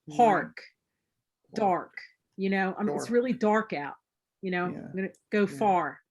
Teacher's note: in Philadelphia, there's a real reach for the R.